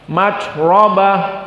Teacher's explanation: Maka ra mufakhamah dikarenakan dia fathah.